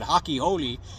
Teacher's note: they don't pronounce the letter R like we do to them it's an h